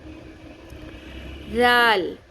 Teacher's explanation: دال کی شکل کا جو ذال ہوتا ہے نقطے والا، وہ نرمی سے پڑھتے ہیں. زبان کی ٹپ اوپر والے سامنے کے 2 دانتوں کے کناروں سے ٹکراتی ہے